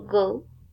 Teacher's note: the articulation place is velar and articulation mode explosive